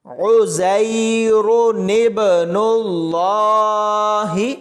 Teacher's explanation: نون کو با کے ساتھ ملائیں گے تو با کلکلا ہوگی، اور اس را کو موٹا پڑھیں گے